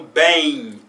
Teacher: no final eu não junto os lábios para pronunciar Um M